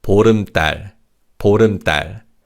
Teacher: in terms of pronunciation, 달 in 보름달 is pronounced as 딸